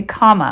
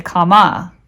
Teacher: And this apostrophe is showing which syllable is accented. So there's more emphasis on the first syllable